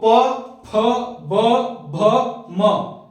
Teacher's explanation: प फ ब भ और म का उच्चारण कर रहे हो तो आपका दोनों होठ एक दूसरे को टच कर रहा है मतलब ये क्या हो जाएगा ओष व्यंजन ठीक है क्लियर है · अगर मैं बात करूं प वर्ग का तो प, फ, ब, भ, म, इसमें सोच रहे होंगे कि सर जीभ तो कहीं भी टच नहीं कर रहा है, तो आपको याद रखना है प, फ, ब, भ और म का उच्चारण कर रहे हो तो आपका दोनों होंठ एक दूसरे को टच कर रहा है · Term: ओष्ठ व्यंजन